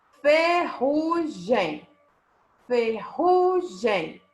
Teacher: penúltima sílaba tônica nós temos paroxítona